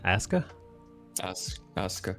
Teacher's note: There's a U between the S and the K, but it's not pronounced.